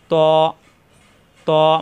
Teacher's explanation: জিহ্বার আগা উপরের দাঁতের গোড়ায় লাগবে